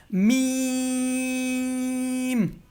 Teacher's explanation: میم کا مخرج ہے ہونٹوں کا جو ڈرائی حصہ ہے، ایک تو گیلا حصہ ہوتا ہے ایک ڈرائی، تو دونوں ہونٹوں کا جو ڈرائی حصہ ہے وہ ڈرائی حصے آپس میں ٹچ ہو گئے تو میم ادا ہوگا